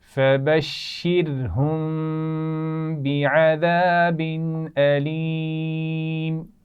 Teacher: فبشرهم میم ساکن کے بعد با ہے تو یہ یہاں پر غنہ کیا جائے گا. میم ساکن کے اصولوں میں سے ہے. · بعذاب علیم تنوین کے بعد حمزہ ہے تو یہاں پر غنہ نہیں ہوگا